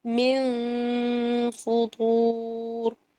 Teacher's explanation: جیسے کہ آیت نمبر 3 کے آخر میں دیکھیے من فطور، یہاں پر نون آ گیا اور پھر اس کے بعد فا آ گیا. تو نون کا غنہ میں کر رہی ہوں لیکن میں فا کی طرف اپنے ہونٹوں کو رکھوں گی. ٹھیک ہے، من فطور.